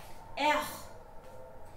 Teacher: the R sound is pronounced as R, and it's pronounced from here, from your throat.